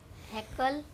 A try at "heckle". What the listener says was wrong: No, not heckle. Kal nahi. Kul.